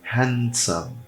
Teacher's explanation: O D, ele é super sutil. Quase como um T. Handsome. Quase como um T.